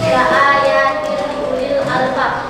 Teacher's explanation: dibaca menyatu, alasannya karena tanwin kasrah bertemu dengan lam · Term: Idgham bilaguna